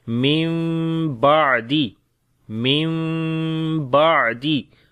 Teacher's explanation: ہوتا ہے بدلنا، تو نون کو ہم میم کے اندر بدل دیں گے